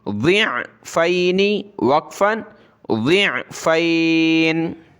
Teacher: ضاد کو موٹا کر کے عین کے ساتھ ملائیں گے، ضاد عین زیر ضع، فا یا زبر فی، نون زیر نی، ضع، عین کو گلے سے نکالیں، ضعفینی وقفاً، ضعفین.